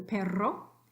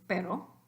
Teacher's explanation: you've got your vibrante multiple, vibrante simple. They're both alveolar.